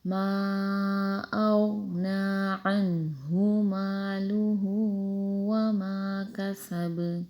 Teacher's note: کسب سین میں سیٹی آئے گی